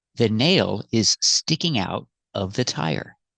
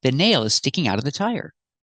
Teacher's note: Sticking out of sounds like sticking outa.